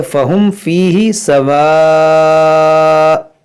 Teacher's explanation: हम वक्फ़ करेंगे तो 2 पेश को साकिन करेंगे और हमजा जब साकिना होगा तो इसमें झटका होगा।